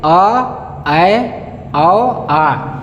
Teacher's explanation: जिन स्वरों के उच्चारण में मुख्य द्वार आधा खुलता है, जैसे अ, ऐ, औ, आ। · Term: अर्धविवृत स्वर